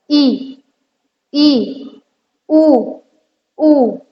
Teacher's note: समृत स्वर में आता है कि हमारा जो मुख है वो लगभग बंद रहता है